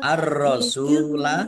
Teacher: alif lam samsiyah karena tidak dibaca langsung masuk ke huruf berikutnya yaitu ro ditandai ro-nya ada tasdidnya.